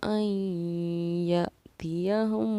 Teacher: इसको हम आई simple आई नहीं पढ़ेंगे, आई पढ़ेंगे आई नाक में, क्योंकि हमारा यौमन का कायदा यहाँ पाया जा रहा है।